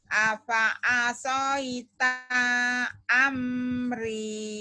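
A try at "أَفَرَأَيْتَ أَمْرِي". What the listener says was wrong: Taknya pendek. Afa asaita amri.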